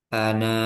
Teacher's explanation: Kan tadinya kan dibaca lanjut kan itu dibaca pendek kalau dilanjut. Nah, kalau waqaf itu jadi panjang dua harakat